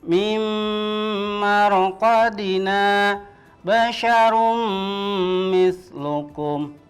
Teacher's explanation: bunyi n-nya itu hilang berubah menjadi huruf mim masuk ke huruf mim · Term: melebur dan mendengung